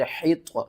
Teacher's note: آپ نے ہا کو آپ نے طوا کے ساتھ ملانا ہے، طوا حروف مستعلیہ میں سے ہے، اس کو ہم نے موٹا کر کے پڑھنا ہے